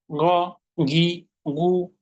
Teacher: যদি গয়নকে জিজ্ঞেস করি কোথা হতে, সে বলবে কণ্ঠনালীর শেষ হতে। কিভাবে? আংশিক খরখরার সাথে মোটা করে। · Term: গইন